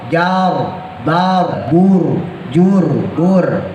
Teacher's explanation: dibaca tipis RI ah merenges beda ro tebal sama ro tipis ro yang sukun sebelumnya harakat fathah atau dah dibaca tebal